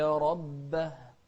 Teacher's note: ننتبه للهمس في الهاء في كلمة ربه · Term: الهمس